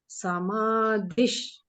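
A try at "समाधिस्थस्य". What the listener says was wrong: Not dhish. It is sir. It is not dhish. Samadhisthasya.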